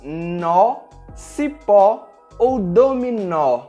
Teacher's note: Com o acento agudo, nós temos um som mais aberto